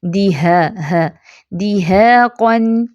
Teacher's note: اس کو دیحاقن نہیں پڑھنا، ہا وسط الحلق والا ادا نہیں ہوگا